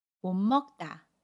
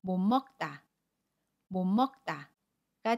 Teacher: 못의 받침 시옷과 첫소리 자음, 미음이 만나면 못 먹다 라고 발음해요. 받침 시옷은 니은으로, 첫소리 자음, 미음은 그대로 발음해요.